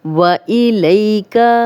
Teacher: لئی یا لین ہے، جزم والی یا پیچھے لام پہ زبر تو اس کو لمبا ہونے سے بچائیں گے، نرمی سے پڑھیں گے